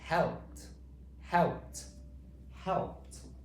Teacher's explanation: In today's word helped, it's making the t sound.